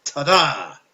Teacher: it consists of one unstressed and one stressed syllable